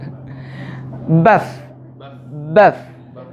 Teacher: Ini baf, ada hembusan angin, jiryanun nafsi.